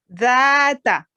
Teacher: अपनी ज़बान का सिरा ऊपर के दांतों के अंदर टच करे